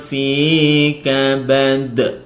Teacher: Qalqalah Kubro yaitu memantulkan huruf Qalqalah akibat berwaakaf ya sukunnya karena berwaakaf